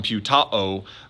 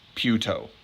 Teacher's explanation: The O forces the A to assimilate, and it just then is a long O